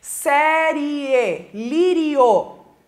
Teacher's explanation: terminam em ditongo tá esse ditongo ele se separa na pronúncia de algumas pessoas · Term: proparoxítona aparente